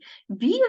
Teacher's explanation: вимовляється не зовсім твердо а дещо пом'якшено